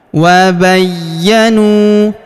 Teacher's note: huruf nu kita panjangkan dua harokat karena waw sukun di depannya, alifnya tidak dibaca.